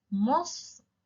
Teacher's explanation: You will add the suffix waw wa noon, but it will be no longer the long vowel, and fatha will remain intact on the fa. And it will now be spelled as Mustafauna.